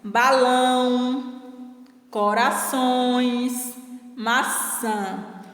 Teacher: Observe que o ão ele está forte na última sílaba. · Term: tônicas